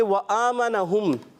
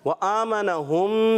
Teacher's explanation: व आमन में हमज़ा पर खड़ी हरकत क्या करेंगे, एक अलिफ खींच कर पढ़ेंगे।